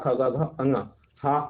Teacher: ख ग घ अ और विसर्ग का स्थान क्या है कंठ है